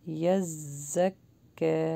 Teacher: زا کو تھوڑا سا پریس کر کے اور بزنگ ساؤنڈ کے ساتھ پڑھتے ہیں